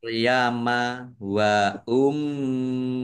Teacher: Mim tasdid bacaan gunah ya dibaca mendengung ditahan biar tampak dengungannya.